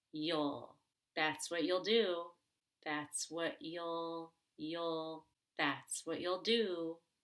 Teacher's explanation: which is a contraction of you and will can be pronounced you'll now that's the short back u as in the word book